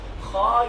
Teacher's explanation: زبان کی پچھلی سائڈ کو، جو زبان کی پشت ہے، زبان کا پچھلا حصہ ہے، اس کو اوپر کے تالو کی طرف لے جائیں تو حرف موٹا ہو جاتا ہے